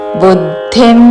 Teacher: బు పక్కన ద కి మహా ప్రాణాక్షము